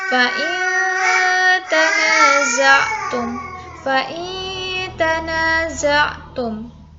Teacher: Nun sukun bertemu dengan huruf ta. Membacanya itu didengungkan selama 3 harokat atau 3 ketukan. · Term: ikhfa